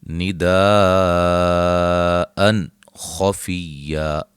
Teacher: نون تنوین کا اظہار ہے، ٹھیک ہے، اس کو اظہار حلقی بھی کہتے ہیں۔ خفیہ، خا کو موٹا، اور جب وقف کریں گے دو زبر کو الف مدہ میں چینج کر دیں گے، ملانے کی صورت میں یہاں نون تنوین کا اخفا ہوگا۔